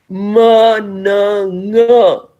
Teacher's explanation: Ma, na, nga. These are the nasal sounds. They are all voiced.